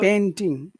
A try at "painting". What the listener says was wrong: You have to if you say panting, that's a different word. So you have to say You have to say that E.